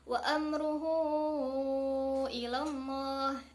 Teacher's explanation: Nah, di situ ada hak dhamir yang sebelumnya ada huruf ra berharokat dhammah, yang setelah haknya itu ada hamzah di lafaz ilallah. Nah, maka ia termasuk ke dalam hukum bacaan mad silah tawilah yang panjangnya itu 5 harokat